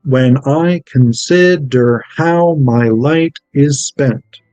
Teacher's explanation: Unstressed, stressed, unstressed, stressed, unstressed, stressed, unstressed, stressed, unstressed, stressed. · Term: Iambic pentameter